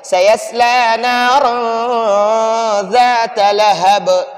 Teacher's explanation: لہب با کو جھٹکا دیں گے، با پر قلقلہ کریں گے. قلقلہ اس کو تجوید کی اصطلاح میں کہتے ہیں، ہم اس کو اردو پشتو میں جھٹکا کہتے ہیں.